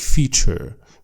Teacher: Brits don't really pronounce the R sound like a rhotic R